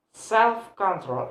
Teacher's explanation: For example, in the word self and control, the place of the stress is in the first word. So self have a stress. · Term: hyphenated compound nouns